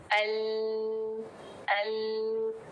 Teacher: लाम सारी एजेस जो है आपकी मसूड़ों से टच करती हैं। अल अल जैसे ही आपकी जुबान सारे मसूड़ों को टच करती है।